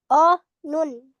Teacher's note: yang keluar dari ujung lidah bertemu dengan gusi atas